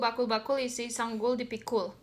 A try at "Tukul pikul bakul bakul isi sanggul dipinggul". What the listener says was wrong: I don't think those are K's. They're not K. No, no. That's supposed to be a G. It's a G.